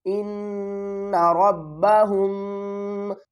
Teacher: میم کے بعد با آ رہا ہے، تو اب ہم کیا کریں گے، میم کی آواز کو چھپا کر پڑھیں گے، یعنی اس پر اخفا کریں گے، اخفاء شفوی۔